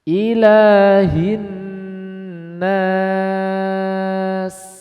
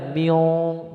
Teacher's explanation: Nah ini dengungnya dengung tipis, jadi jangan diangkat pangkal lidahnya, miong, nggak boleh.